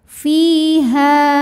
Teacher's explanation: Ya Sukun didahului harakat kasrah maka huruf Fa panjang dua harakat fiha ha juga Mad Thobi'i zohiri sebab ada Alif didahului harakat · ada Alif didahului harakat fathah maka huruf ha panjang dua harakat